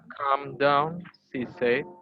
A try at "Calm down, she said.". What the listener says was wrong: Come and come-nya sudah benar, but here jangan terjebak sama dengan say. Kalau SAY kan bacanya say. Tapi kalau verb duanya kayak gini, terus sad, sad, she sad. Calm down, she sad. Calm down, she sad. Ini bukan said, tapi sad. Suara yang kemarin itu ya, sad.